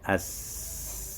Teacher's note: la caractéristique as-safir sur la lettre sinun, c'est-à-dire le son, comme le son d'un oiseau